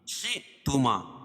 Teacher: حیث شئتما، پہلے تھا پھر شین، شئتما، یہاں حمزہ ہے، بتایا تھا کہ حمزہ لکھی اس کے اوپر جزم ہو، یعنی وہاں جھٹکا ہوگا